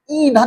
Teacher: हवा नाक से बाहर निकलना चाह रही है, ईंधन बोलते हुए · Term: अनुनासिक स्वर